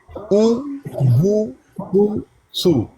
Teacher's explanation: جب پیش کو پڑھا جائے نا تو ہونٹو کو گول کرتے ہیں